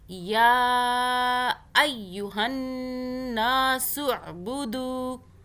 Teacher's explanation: عین کو حلق سے پڑھنا ہے · نون کے اوپر تشدید ہے تو یہاں پہ 2 سیکنڈ کا غنہ کریں گے